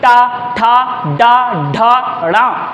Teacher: मूर्धा पे टकराएगी, जीभ खड़ी हो जाएगी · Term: टा वर्ग